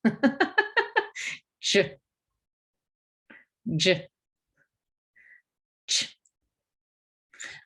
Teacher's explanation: If you feel the roof of your mouth, and you stop the airflow when you put the tongue on behind that ridge, and then you release air with friction.